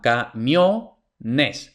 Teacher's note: la sílaba tónica sigue siendo la misma, camiones. Pero ahora esa sílaba no es la última, sino que es la penúltima. Entonces, es una palabra llana terminada en N, S o vocal, entonces no lleva tilde.